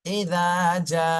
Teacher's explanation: দালটা নরম বলতে হবে, এই দাল নরম, যা, জিম শক্ত, 4 আলিফ টান দিতে হবে